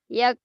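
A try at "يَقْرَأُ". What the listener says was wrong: Oh, kalau kota ke G ya. K-nya ke G. Yak, yak, jangan ke G. Yak, yak, yako, yako, yak. Yak, ra'u. Yak, ra'u.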